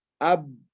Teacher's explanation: Makhraj ba dan mim keluar dari paduan antara dua bibir dalam keadaan tertutup.